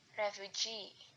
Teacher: Primary stress on the suffix, secondary stress on the stem.